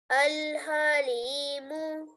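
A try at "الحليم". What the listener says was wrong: Just try to read the ha a bit more from your throat. Al-halimu.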